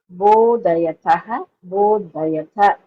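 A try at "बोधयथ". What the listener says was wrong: So that you have to pronounce it as Mahaprana. It is Everywhere your dhakaras sounding as alpaprana.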